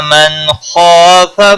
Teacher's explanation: इस इजहार को इजहार हल्की कहते हैं। खा हुरूफ मुस्तालिया में से पूर पढ़ा जाएगा